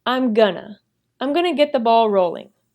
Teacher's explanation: the reduction of going to. This will reduce to gonna.